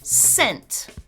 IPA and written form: sɛnt (scent)